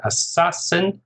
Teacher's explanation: Assassin, 3 syllables, stress on the second